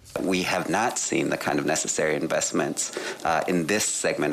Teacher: I didn't hear a word he said because of the amount of vocal fry on that